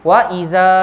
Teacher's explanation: Di antara dua perkataannya, alif jumpa hamzah di antara dua perkataan. Bacaannya 4 harakat. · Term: mad jaiz munfasil